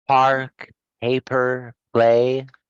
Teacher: the sound is unvoiced the vocal chords do not vibrate while producing it and it is the counterpart to the voice sound to create